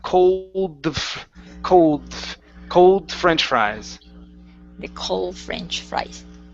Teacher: you're ending on the L, then moving right to the F